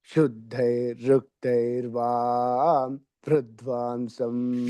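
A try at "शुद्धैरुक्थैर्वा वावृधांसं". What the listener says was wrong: ఇక్కడ సున్నా లేదు సారు. మీరు శుద్ధైరుక్తైర్వా అని చెప్పిన సున్నా పెడుతుంది నాకు. ఆ సున్నా లేదు.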